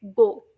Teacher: यह जो है साउंड इसके अंदर आप लोग नोट करें कैसे टंग जो है पहले हाई बैक पोजीशन पर होती है यानी हाई और फिर बैक